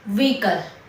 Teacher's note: આ વર્ડમાં એચ અલગથી બોલાતો નથી. વ્હીકલ, H is silent. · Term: એચ સાયલેન્ટ